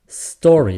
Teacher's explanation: the emphasis is on the store part the first syllable the second syllable is not stressed